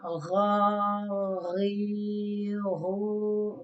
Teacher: pronounced on that top part of the throat, like gha. A little bit itchy, like in your throat. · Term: ghain